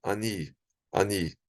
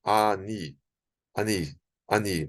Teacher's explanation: Seria assim um A mais rápido. Você não vai dizer ani, ani, ani. Você não fala com muita força esse A aqui. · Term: shivá com tracinho